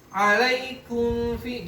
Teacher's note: Karena mim itu makhluknya syafatan, fa juga syafatan, waw juga syafatan. Biasanya mimnya nggak ngerapat jelas sempurna, tapi ikhfa.